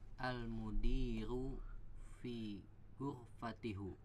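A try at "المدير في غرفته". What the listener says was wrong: Ada fi ghurfati. Ya, udah benar ya, fi ghurfati, tapi hu-nya dibaca jadi hi ya.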